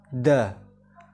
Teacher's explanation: keluar dari ujung lidah bertemu dengan gusi bagian atas sifatnya jaher selain itu juga mempunyai sifat memantulkan atau Qalqalah yang selanjutnya so